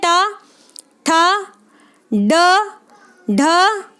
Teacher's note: तो ट वर्ग की ध्वनियां हो गई मूर्धन्य ध्वनियां